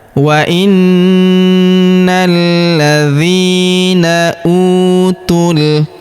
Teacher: huruf u kita panjangkan dua harakat karena wau sukun di depannya utul huruf tu langsung lompat masuk ke huruf lam yang berharakat sukun.